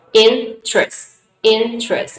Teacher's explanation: American speakers do not pronounce this word in 3 syllables, but they only pronounce this word into 2 syllables.